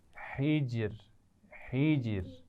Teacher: جیم پر قلقلہ بھی واضح ہو اور آخر میں را باریک پڑھی جائے